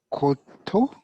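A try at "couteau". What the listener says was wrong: Yes, kuto. OU is U, but EAU is letter O. So U-O. So we say kuto. Kuto, okay?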